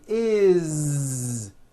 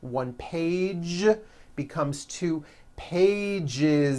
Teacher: we always add the ending is with a voiced z is it doesn't matter that it's spelled with an s it's